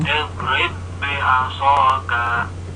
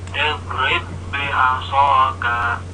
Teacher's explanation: ba yang tertulis dua huruf ini nanti dibaca menjadi satu ba. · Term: idgham mutamassilain